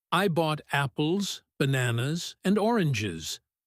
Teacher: Item one, voice goes up. Item two, voice goes up. Item three, voice drops down to the floor. The dropping voice is the alarm that tells you the list is over.